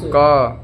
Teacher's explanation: क कंठ से निकल रहा है